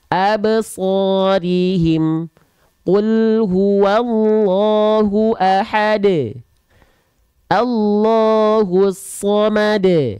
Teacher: dal dan huruf ba itu punya sifat qalqalah dan mereka huruf yang tipis. Maka ketika memantul bunyinya e.